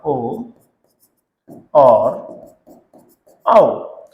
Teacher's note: ओ और औ कहां से बोले जाते हैं? ये बोले जाते हैं आपके कंठ ओष्ठ। कंठोष्ठ वर्ण होते हैं ये।